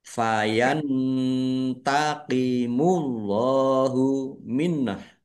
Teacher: Fayantaqimullahu minah. Nun sukun bertemu dengan huruf ta. Bacaan ikhfa dibaca samar-samar. Allahnya dibaca tebal karena harakat di depannya dmah.